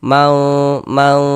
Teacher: Kemudian didengungkan jadi bagian maunya itu suaranya itu kita tahan ya kita panjangkan sebentar sepanjang dua harakat · Jangan dibaca mang, jangan, atau man, jangan, tapi disamarkan. Mau seperti itu.